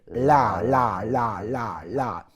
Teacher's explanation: a very pronounced la, flicking the tongue right forward. La, la, la, la, la, which again brings your tongue to life.